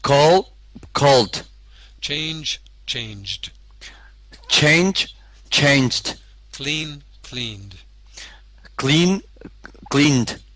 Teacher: the final sound is a d but the important thing is you don't pronounce separately the Ed